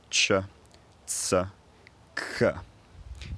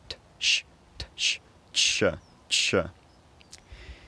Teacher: So some examples of affricates are ch, ts, k. It's a plosive released into a fricative.